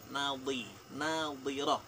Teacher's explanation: Nadhi itu sisi lidah menyentuh di geraham atas kemudian ditekan. Nadhirah, tidak keluar udaranya. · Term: dhad